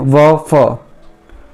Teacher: दंतोष्ठ्य यानी निचले होंठ व ऊपरी दांतों से